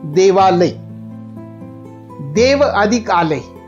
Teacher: देवालय, देव अधिक आलय, इथे पण अ प्लस आ अशी रचना होतीये आणि निर्माण होणारा शब्द दीर्घ स्वर आ आहे